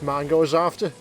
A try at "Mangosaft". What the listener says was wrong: No, there's no E on the end of Saft.